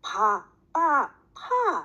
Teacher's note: 양쪽 입술에서 나는 음이다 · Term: 양순음